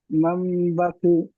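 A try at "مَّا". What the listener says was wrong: এই মাম বলে একটু গুণনা করেন, একটু এগালি পরিমাণ গুণনা আছে, মাম পাখি। হ্যাঁ, ঠিকই পড়েছেন, কিন্তু এইখানটা একটু গুণনা কম হয়ে যাচ্ছে। এই যেমন মাম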